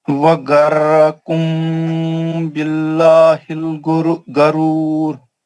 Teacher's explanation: پھر یہاں پر لفظ جلالہ پتلا کر کے پڑھیں گے اس سے پہلے کیونکہ زیر ہے